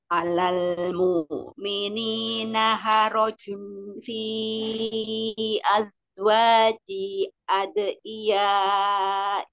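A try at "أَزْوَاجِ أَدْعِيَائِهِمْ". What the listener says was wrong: Azwaji. Ajinya jangan dua harokat tadi bacanya panjang. Ya, azwaji ad'iyaihim.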